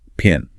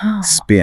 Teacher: But the P in spin has almost no aspiration.